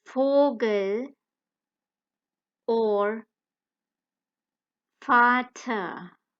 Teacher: The German vowels f sound cannot be heard in any English word beginning with V. However, the f sound can be heard in most German words beginning with V. For example, Vogel or Vater.